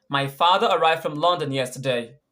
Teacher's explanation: the stress word here is father